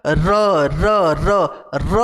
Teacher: जीभ हमारी फोल्ड होती है और फोल्ड होकर दांत के ऊपर जाके जो है कि टच करती है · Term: दंत मूल व्यंजन